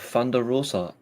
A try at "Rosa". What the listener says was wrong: You have to roll your R's.